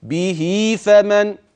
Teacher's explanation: هاء به وقعت بين متحركين ففي عندي مد صله طبيعي